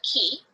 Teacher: As the E in key is formed at the front of the mouth, you are more likely to feel the k sound closer to the front as well.